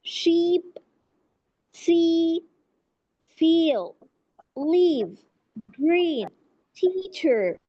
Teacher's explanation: So the E sound is a long front vowel sound. It is clear, stressed and commonly used in English pronunciation.